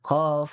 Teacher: keluarnya itu di pangkal lidah bertemu langit-langit lunak. Kemudian di huruf kedua-dua ada kaf yang dia ke tempat keluarnya di pangkal lidah bertemu langit-langit yang bagian kerasnya.